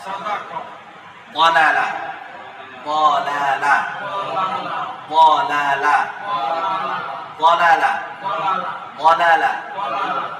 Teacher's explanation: দাঁতের গোড়া, যেমন দা তা। কিন্তু এই হরফের উচ্চারণের জায়গাটা হচ্ছে জিহ্বার ডান সাইড অথবা বাম সাইড, জিহ্বার গোড়ার ডান দিক অথবা বাম দিক, উপরের মাড়ির দাঁতের গোড়ার সাথে